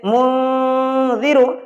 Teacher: تو نون ساکن کے بعد زال حروف اخفا میں سے آ گیا، اس لیے اب نون کی آواز کو ظاہر نہیں کرنا ہے بلکہ ناک میں چھپا کر پڑھنا ہے۔ اس طریقے سے منذر، اور زبان کی نوک تالو سے ہٹا رہنا چاہیے، اتنی بات کا آپ کو خیال رکھنا ہے۔